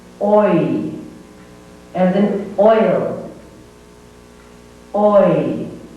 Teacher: Next comes another diphthong, and this is made up of aw and e blended together.